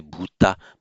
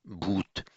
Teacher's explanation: the modern languages of northern India, the ones derived from Vedic and the Prakrits, they tend to lose the final ah